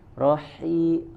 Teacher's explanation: Huruf ha tengah tenggorokan, rahim. Terasa angin suara yang keluarnya.